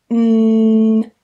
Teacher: Again, the sound travels out of my nose because it's another nasal sound. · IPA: /n/